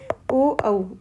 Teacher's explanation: ओ औ का चरण स्थान है कंठ और ओष्ठ। इसलिए बोलते हैं कंठोष्ठ।